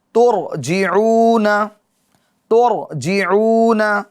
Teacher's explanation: تو ابھی اس را کو کیا کریں گے؟ پر یعنی موٹا پڑھیں گے